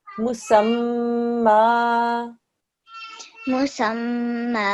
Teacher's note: 2 second ghunna on the meme because it's a meme mushaddad.